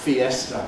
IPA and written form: fiˈestə (fiesta)